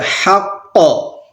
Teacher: ہم ساکن کریں گے، رکیں گے تو کیسے پڑھیں گے، حق، یہاں پر قلقلہ ہو جائے گا کیونکہ یہاں پر قاف ساکن ہو جائے گا